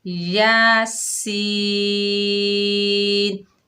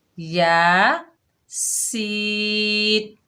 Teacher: یا جو ہے باریک حرف ہے، سین سختی والا، سیٹی والا اور باریک حرف ہے